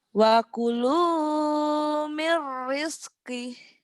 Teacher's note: Rizq jangan ada rizq ya, jangan ada kolkol. Rizki. Nah, jangan ada e-nya.